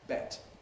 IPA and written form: bet (bet)